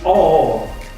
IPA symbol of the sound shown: ɔ: